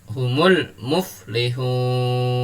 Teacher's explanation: dibaca panjang sampai dengan enam harokat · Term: mad arid lisukun